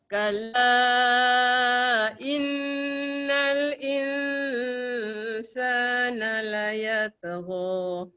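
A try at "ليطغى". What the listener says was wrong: La yatgha. Ta tebal. La yatgha. La yatgha.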